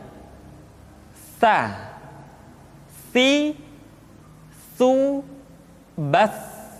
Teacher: Sa dikeluarkan dengan menyentuhkan ujung lidah kita dengan dinding dua gigi seri bagian atas. Diucapkan dengan suara dan nafas yang terdengar mengalir. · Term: huruf Sa